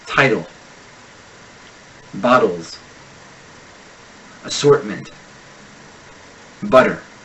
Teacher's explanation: the vocal folds tighten for a brief moment robbing the tongue of its ability to articulate the T this complete stoppage of air can be triggered by the stress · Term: glottal stop